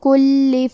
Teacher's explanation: کلمت کلی میں حرف اللام پہ تشدید ہے تو ہمیں 2 حرف کے برابر لام کو پڑھنا ہے